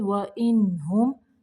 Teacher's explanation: یہاں پہ نون کو ظاہر کرنا ہے، میم کو بھی یہاں پہ ظاہر کریں گے